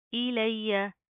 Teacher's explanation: یا کے اوپر تشدید ہے سختی سے جما کر پڑھیں گے